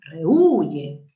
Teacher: tú tienes que evaluar la secuencia de vocales e u y el acento no está en la e está en la u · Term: hiato acentual